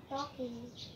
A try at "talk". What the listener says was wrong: Talk. There's no ing, so hindi siya talking. So, talk lang siya. Talk.